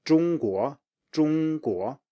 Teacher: So it's a high tone plus a rising tone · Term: first tone plus second tone